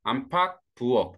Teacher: 기읍은 기읍, 쌍기읍, 키읔은 다 기읍으로 난다. 대표는 기읍으로 납니다.